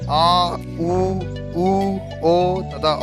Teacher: आ, ऊ, ओ तथा औ के उच्चारण में जीभ का पिछला भाग सक्रिय होता है, अतः ये पश्च स्वर कहलाते हैं